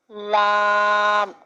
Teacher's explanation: زبان کا کنارہ جب اوپر کے 4 دانتوں کے مسوڑوں سے لگے تو لام ادا ہوتا ہے